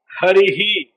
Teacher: రేప ఇకారముల తర్వాత విసర్గలు ఉంటాయి అందువల్ల హరిహి అనాలి